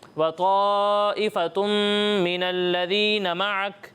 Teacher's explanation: یہاں مد متصل ہے، اس کی مقدار پوری نہیں کر رہے، ٹھیک ہے، اس کی مقدار پوری کرنی ہے